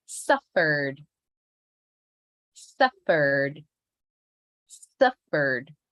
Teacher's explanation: emphasize put all your energy in the first syllable